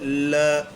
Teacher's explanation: जब इस वर्ण का उच्चारण करते हैं ल का तो जीभ के बगल से वायु गुजर जाती है बगल पार्श्विक का मतलब यही होता है पार्श्व यानी बगल साइड · ल का उच्चारण करते हैं तब बोल के देखिए, ल ऐसा लगता है जैसे वायु जीभ के साइड से होकर के गुजर गई हो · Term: पार्श्विक व्यंजन